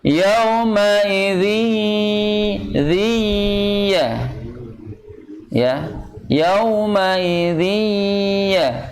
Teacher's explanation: Yauma idzi, jadi jangan zi, tapi masuk ini. Karena idgham bigun, nah jadi separohnya ke pangkal hidung, separohnya lagi masuk ke huruf ya.